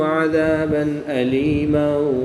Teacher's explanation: غنہ نہیں کریں گے بلکہ تنوین کو ظاہر کر کے پڑھیں گے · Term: اظہار